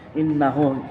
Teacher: Innahu gunna musyaddadah karena ada huruf non yang bertasydid. Cara membacanya masuk dengan berdengong. Innahu mat silah qasira karena sebelum ha dhamir ada huruf yang hidup yang ada barisnya.